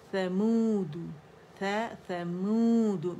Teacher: میم کو ہم نے پکڑ کے گولائی دینی ہے اور مد اصلی ہے اور دال پہ دمہ کریں گے سمود بیتو بیتغواہ تو موٹا